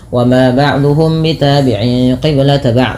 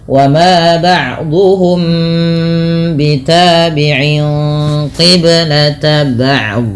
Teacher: ada mim mati bertemu dengan huruf ba. Ini merupakan bacaan ikhfa syafawi, perlu ditahan dalam membaca nya.